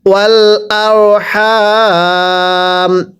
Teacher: র সাকিনের পূর্বে জবর থাকলে র সাকিনগুলো মোটা করে পড়তে হয়। আমরা অনেকে আর পড়ি, এখানে আর পড়লে পড়া শুদ্ধ হবে না।